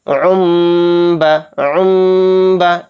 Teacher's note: اس عین دو پیش عن میں جو لاسٹ میں نون کی وائس تھی، این کی وائس تھی، اس کو ہم سائلنٹ کر دیں گے اور عین میں میم کو ملا کر پڑھیں گے یعنی غنہ اور اخفا کے ساتھ۔ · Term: اقلاب